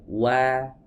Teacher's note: huruf wawu semuanya tipis, ya, karena dia memiliki sifat istifal. Ya, tidak memiliki sifat isti'la.